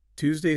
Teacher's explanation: Tuesday starts with a simple T sound. Your tongue just taps the roof of your mouth.